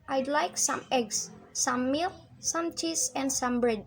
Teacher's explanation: Contohnya yaitu, I'd like some eggs, some milk, some cheese, and some bread. Nah, ketika menyebutkan eggs, milk, cheese, dan bread itu dibacanya naik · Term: rising intonation